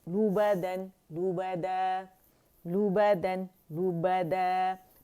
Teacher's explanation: لام پہ دمہ پہ ہونٹ گول ہونا ضروری ہے. لومزتن, لومزہ, لہبن, لہب, مسدن, مسد, نخیرتن, نخیرہ, وجد, وجد, وجد.